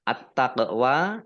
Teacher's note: alif lam samsiah karena tidak dibaca, langsung masuk ke huruf berikutnya yaitu ta, ditandai taknya ada tasdidnya, taknya dibaca double.